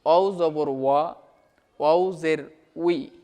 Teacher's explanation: ওয়াওর একটা মাখরাজ আছে, সেটা হচ্ছে ওয়াও দুই ঠোঁটের মাঝের ফাঁক হতে আদায় হবে। ঠিক আছে? ওয়াও দুই ঠোঁটের মাঝের ফাঁক হতে আদায় হবে, সেটা হচ্ছে ওয়াও।